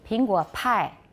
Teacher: you have stronger aspiration in mandarin